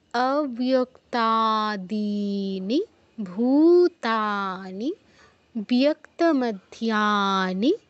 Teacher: অব্যক্তাদীনিতে কিন্তু আবার দীর্ঘ করলে হবে না, দিতেই দীর্ঘ। নি বলে দ্রুত ভূতে চলে যেতে হবে, তারপর ভূতে দীর্ঘ করতে হবে। ভূতানি, ভূতা দীর্ঘ, নি বলে সাথে সাথে বিয়তে চলে যেতে হবে।